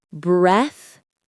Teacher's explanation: The stress is right at the beginning.